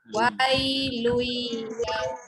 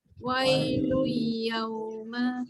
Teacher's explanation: Kita baca wai, jangan baca lun. Tanwin jumpa ya, masuk bunyi ya. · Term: Idgham bi khunnah